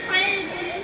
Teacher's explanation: என்னுடைய பிறப்பிடம் நாவின் கடைசி பகுதி அதற்கு மேலுள்ள வாயின் சதை பகுதியில் இணையும் போது நான் உருவாகிறேன். என்னுடைய பிறப்பிடம் நாவின் கடைசி பகுதி அதற்கு மேலுள்ள வாயின் சதை பகுதியோடு எலும்பு பகுதியில் இணையும் போது உருவாகிறேன். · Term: காஃப்